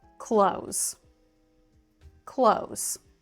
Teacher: In American English, even though you see a TH in the word clothes, you can hear that I don't pronounce the TH.